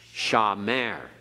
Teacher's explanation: So a word like shamer, we accent on the last syllable. It's not accented on the first.